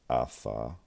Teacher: One, we can start with the second masculine singular subject pronoun, and they have transliterated it with the tau representing the voiceless dental fricative